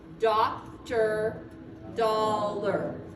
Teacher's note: so o-r at the end of a word when there's no stress is going to say er · when an OR or an AR come at the end of a word, no stress, it's a schwa, and it's going to say Doctor, dollar.